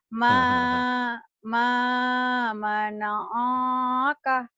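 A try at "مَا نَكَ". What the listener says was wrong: Ini kan bukan alif, ini kaf. Pendek ini. Yang panjang ini doang. Pendek. Ini kan bukan alif, ini kaf.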